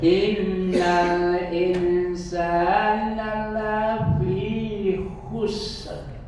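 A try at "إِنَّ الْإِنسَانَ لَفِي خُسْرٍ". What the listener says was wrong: Nah, tapi kurangnya tadi ser. Itu yang kurang. Khusr. Roknya dibulatkan ya.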